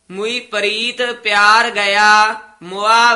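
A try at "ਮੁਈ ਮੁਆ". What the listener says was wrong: ध्यान नाल पद उचारण करने है मुई मुआ दलैंकड़ नाल नहीं बोलने औंकड़ है मुई मुआ इस तरह छेती बोलने है मुई प्रीत प्यार गया मुआ वैर विरोध।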